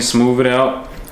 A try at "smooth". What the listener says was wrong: You said smooth it out with a V. Put the TH at the end, not smooth.